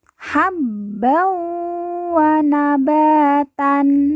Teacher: m yang bertasdid langsung ditekan dan ditahan dua harakat